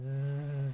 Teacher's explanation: And that vibration is the vibration of the vocal folds. We call that voicing.